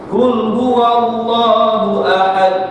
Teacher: Allah lam tu kena baca tebal. Dibaca tebal. Pada lam sahaja.